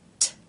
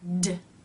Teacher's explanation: sounds are paired together because they take the same mouth position T is unvoiced meaning only air passes through the mouth and D is voiced meaning D you make a noise with the vocal cords these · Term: stop consonants